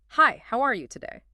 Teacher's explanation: When you practice it slowly, focus on that friendly, slightly rising tone on today.